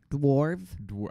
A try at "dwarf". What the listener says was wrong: I think you have to pronounce the W, right? Dwarf.